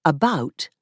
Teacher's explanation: one difference is the pronunciation of ow which Canadians pronounce as o in some words so the word about sounds like a boat Australian English has